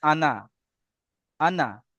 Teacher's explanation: এই আনা শব্দ কোরআনে যত জায়গায় আছে টান হবে না।